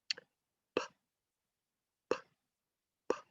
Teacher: Unvoiced, you do not use your vocal cords, you do not use your voice, you do not use your larynx. Air comes out, but no vocal sound comes out. Okay, you can just hear air, but you're not using your vocal cords.